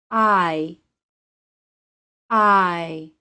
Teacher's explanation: [Music] the long i sounds like I if you listen very carefully to the pronunciation of this sound you will hear a very brief Y sound at the end of it I I the long i is a two sound vowel to